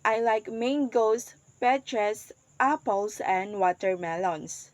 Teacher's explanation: the rising juncture here is after each fruit in the list